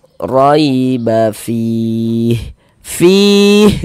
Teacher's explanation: Huruf lin karena ada huruf ya sukun sebelumnya harakat fathah maka kita baca lunak lembut. Riba fih fih dibaca panjang.